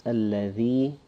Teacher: A lot of us have the habit of saying allazi. It's alladhi, where the tongue will protrude a little bit somewhat. Again, it's like the th of that. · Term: dhal